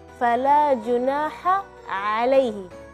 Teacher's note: Ha dan A itu sama-sama keluar dari tengah-tengah tenggorokan